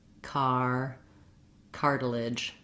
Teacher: So first of all, in the word cartilage, we have 3 syllables. The first syllable, car, is stressed, and it has the clear R diphthong. If that diphthong gives you trouble, work on that separately in other words and then work to building it into cartilage.